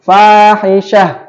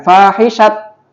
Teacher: Syah itu adalah ada tak marbutoh. Ya, tak marbutoh kalau dalam akhir kata maka dibaca ha